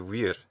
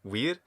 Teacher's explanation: it's not so bright it's somewhat reduced the vowel quality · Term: reduced quality